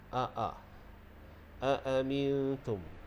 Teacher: Huruf hamzah ini makhrajnya adalah di pangkal kerongkong. Pangkal kerongkong ni berdekatan dengan dada. Jadi huruf hamzah keluarnya di situ.